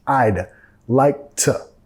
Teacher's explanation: Reduciendo el to a un t.